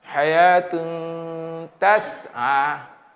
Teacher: ini tanwin berjumpa dengan ta, huruf ikhfa yang bersifat istifal. Sembunyinya nipis.